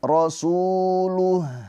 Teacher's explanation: Su dibaca panjang dua harakat mad thobi'i. Karena ada wau sukun sebelumnya harakatnya dommah.